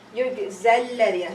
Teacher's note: you are not going to treat alif maksura as an alif. It's going to be dropped.